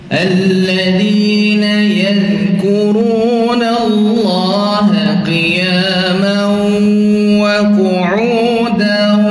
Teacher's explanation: Sebab waw keluar daripada dua bibir. Waw tempat keluarnya daripada dua bibir.